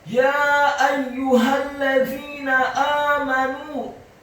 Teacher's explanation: ya-nya dibaca tipis fathah 4-6 harokat karena setelah huruf ya ada alif dan di atas harokat fathah huruf ya ada harokat bendera.